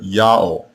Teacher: The Assyrians also did not hear the sound W. The letter Wah in this name is not the consonant, it is the vowel marker, and the vowel that was heard was the long O vowel.